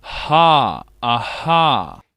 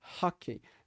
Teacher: Então, essa palavra, como vocês podem ver, o som do H é o som que nós encontramos aqui, ou seja, esse som na glote, bem aqui atrás na glote, e um som sem vibrar as cordas vocais